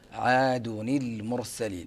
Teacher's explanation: نظهر اللام لأنه وقع قبل الميم